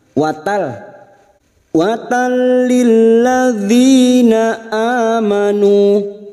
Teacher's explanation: nun sukun atau tanwin yang bertemu dengan huruf lam dan ro, namanya bacaan idgham bila gunah, hanya masuk tanpa mendengung, tanpa ditahan lama-lama. Watal lilladzina amanu, tal lilladzi masuk lagi pada huruf lam yang bertasdid.